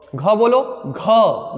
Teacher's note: ढेर सारा वायु बाहर निकल रहा है तो महाप्राण होगा